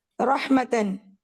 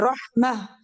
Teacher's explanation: ہم تا کو ہا میں چینج کر دیتے ہیں رحمہ.